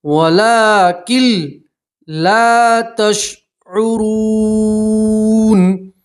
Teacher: نون ساکن کا لام کے اندر ادغام تو ہوگا مگر گننا نہیں کرنا ہے، ٹھیک ہے، تو نون ساکن کو نہیں پڑھیں گے، کاف کو سیدھا لام سے ملائیں گے.